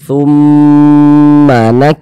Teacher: thumnya kita gunnahkan, jadi kita tahan, kita panjangkan sejenak. Thummanak, ma-nya dibaca pendek.